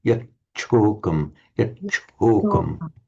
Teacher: You've got to hold the cha, but also aspirate it. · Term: aspirated